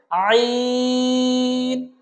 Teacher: আইন হরফটার উচ্চারণটা হা যে জায়গা থেকে আমরা উচ্চারণ করেছিলাম, ঠিক একই জায়গা থেকে উচ্চারণ করতে হবে, অর্থাৎ কণ্ঠনালীর মধ্যখান থেকে। আমরা কণ্ঠনালীর মধ্যখান থেকে বলেছিলাম হা, ঠিক একই জায়গা থেকে আমরা বলবো আইন, আইন।